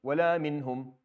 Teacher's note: the noon with the ha after, the ha is not a harf ikhfa, it's harf idhar. So you end up with no 2 count.